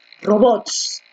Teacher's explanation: la fuerza de voz está en bots en la última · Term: aguda